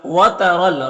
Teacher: را کے اوپر زبر را کو پر پڑھیں گے، یا میں کوئی حرکت نہیں، اس کو نہیں پڑھنا ہے۔